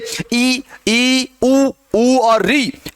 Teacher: ई ऊ और री, इनके अंदर सबसे कम खुलता है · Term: संवृत